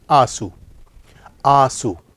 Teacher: यहाँ पे पूरा नून नहीं बोला जा रहा, नाक में बोला जा रहा है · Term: नून गुन्ना